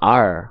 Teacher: kalau R mah r enggak ada getarannya kan kalau huruf r Enggak ini ada getarnya R ro ri